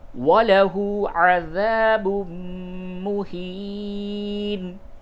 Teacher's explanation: تنوین کے بعد میم ہے، ادغام مع الغنہ کیجئے